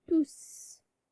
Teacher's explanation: Le S final s'entend à l'oral, donc on prononce S. On prononce S, donc on dit tous.